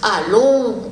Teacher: est accentuée quand elle est en début de mot a long on va bien accentuer le a il va être un petit peu plus long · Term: allongements de voyelle